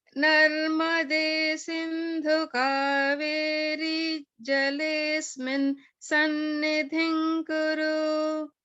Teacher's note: kaveri ends in a hrasva. So we want to make sure we're not pronouncing the ri as like a dirgha. And then also in jalesmin, if we pronounce it like that, there's holding on the is, jalesmin.